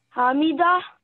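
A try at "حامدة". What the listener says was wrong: دیکھو ہا کی آواز کہاں سے نکلنی چاہیے؟ حروف ہلکی ہیں, گلے سے نکلنی چاہیے. میں یہ تو نہیں کہتا کہ کچھ بہت ہی کوئی ٹرائیاں کریں, لیکن بسین فضوخن کہ ہے یہ گلے کی آواز ہے.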